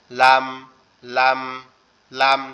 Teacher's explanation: জিহ্বার আগাটা এই যে উপরের যে দাঁত আছে মাড়ির দাঁত এই জায়গার সঙ্গে লাগবে, লেগে লাম লাম লাম,